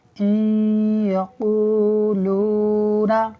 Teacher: نون ساکن کے بعد یا حروف یرملون میں سے ادغام ہوگا، یعنی ہم غنہ کرتے ہوئے پڑھیں گے